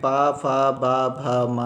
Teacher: पा वर्ग में देखिए कि क्या कहते हैं, पा वर्ग में पा फा बा भा मा है, ये सभी जो हैं ओष्ठ से, मतलब इनको बोलने में जब है आप बोलेंगे तो ओष्ठ मतलब ओठ जो है आपके, उसमें आपको इसमें आप बिना होठ को हिलाए या बिना उसके मदद के आप इनको शब्दों को नहीं बोल सकते हैं